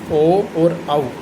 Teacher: ओ और औ जो स्वर होते हैं ओ और जो औ जो दीर्घ स्वर होंगे इनका उत्पत्ति स्थान उच्चारण स्थान होगा कंठोष्टम अर्थात कंठ और ओष्ठ होठों के माध्यम से इनका उच्चारण किया जाएगा